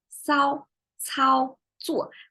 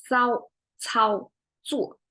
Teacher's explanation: And they are all what you call 平舌. So you don't curl your tongue in these pronunciations. You have to go flat.